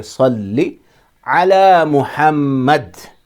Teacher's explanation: اللہم، صلی نہیں ہے، لام کے اوپر بھی تشدید ہے، اس لیے پڑھیں گے صلی، صلی، اور صاد ہے تھوڑا اسے موٹا پڑھیں گے، سین کی طرح نہیں پڑھیں گے